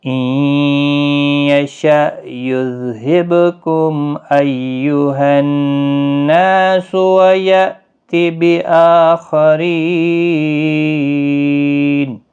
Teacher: با ساکن پر قلقلہ ہوگا۔ میم ساکن کے بعد حمزہ آیا ہے تو اظہار شفوی ہوگا۔